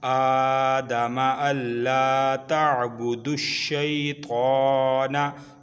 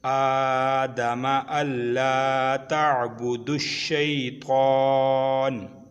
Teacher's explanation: आगे कच्ची वक़फ़ आ गई तो यहाँ पे नून साकिन हो जाएगी